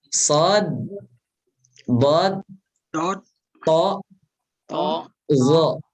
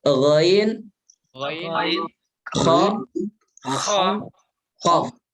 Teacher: 4 huruf yang pertama, yaitu shad, dad, to, dan zo, ini kadar tebalnya di atasnya 3 huruf yang terakhir